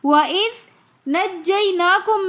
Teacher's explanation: اگر ہم نے وَإِذْ پڑھ لیا تو ہم نے ذال کے مخرج کو ذا کے اندر تبدیل کر لیا، جو کہ لحن جلی کی غلطی ہو جائے گی، یعنی ایک حرف کو دوسرے حرف کے اندر تبدیل کرنا جو کہ حرام ہے۔ لہٰذا ہم یہاں پر ذال کو نرمی کے ساتھ پڑھیں گے بغیر سیٹی کے، تاکہ ذال کا مخرج ذا کے مخرج کی طرف نہ جائے۔